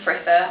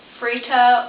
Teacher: they don't have the th sound in France. They pronounce it just like a T.